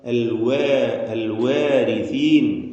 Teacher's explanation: വാവ് രണ്ട് ചുണ്ടുകളിൽ നിന്ന് തന്നെ വരണം ചുണ്ട് വൃത്താകൃതിയിൽ ആയിരിക്കണം